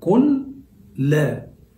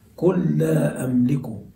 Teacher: أصل الكلمة قل لا، فأضغمت اللام في اللام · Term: الإضغام